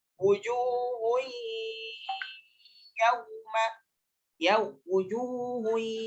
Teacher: Dileburkan ke ya. Tidak dibaca tanpa dengung, tapi harus dibaca dengan dengung. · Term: idgham bi gunnah